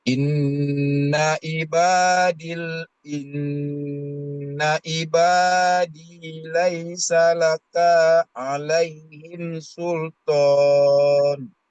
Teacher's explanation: Lakanya dibaca pendek, kemudian kalau berhenti menjadi mad arid disukun.